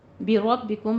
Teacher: रॉ को पुर पढ़ना है। बाकी आवाज़ बारीक रखिएगा।